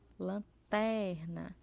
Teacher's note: a sílaba tônica é a penúltima. Por exemplo, lanterna, ou seja, ela vai ser paroxítona, porque ela está na penúltima posição.